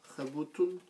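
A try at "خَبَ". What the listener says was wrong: Non, déjà, il n'y a pas de tanwin, il n'y a pas de c'est une fatha, c'est une voyelle A. c'est le son A.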